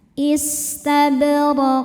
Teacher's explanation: hukumnya adalah qalqalah kubra karena ada huruf qalqalah yaitu qof yang sukunnya karena berhenti ya tadinya tanwin kasrah maka dibaca dengan pantulan-pantulan yang besar.